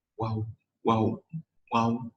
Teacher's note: Jadi dari menutup, kemudian dibuka, ditutup lagi huruf waw ini.